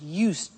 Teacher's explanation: I said used with a T sound. Used, not used or used.